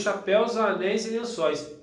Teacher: Então, pessoal, o dói é um ditongo aberto